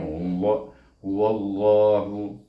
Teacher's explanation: apabila sebelum nama Allah baris di atas, dia kena baca dengan tebal